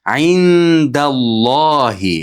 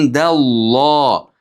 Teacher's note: Undan keyin nun dalni ichiga kiradi. Indalloh yashiriladi. Ixfo bo'ladi.